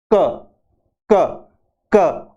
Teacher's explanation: जिह्वा के जो पीछे का भाग है वेलर, सबसे पीछे का भाग वेलर, जहां से कंठ शुरू होता है और जुहा खत्म होती है, वहां उसका यूज करके इसको बोलते हैं क क क।